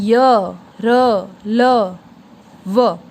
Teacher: हम जब इन्हें बोलते हैं तो हमारी जो जीवा है, हमारी जो जीभ है, वो हमारे मुख के किसी भी भाग को स्पर्श नहीं करती। ये होते हैं अंतःस्थ व्यंजन।